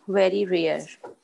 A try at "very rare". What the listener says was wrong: But the last one is a very rarely. It sounds like a rarely.